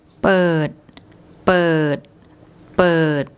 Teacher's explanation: a mid-class initial consonant, a dead syllable and a long vowel makes a low tone